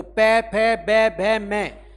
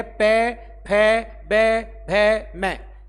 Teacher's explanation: जो पै वर्ग है वो पूरा क्या है? ओष्ठ्य है।